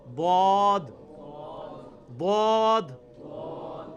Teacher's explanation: ضاد یعنی لیفٹ زبان کا کنارہ اوپر کے دانتوں کی جڑ میں لگانا ہے، یا دونوں کو پیرلل میں دونوں کو بھی لگا سکتے ہیں.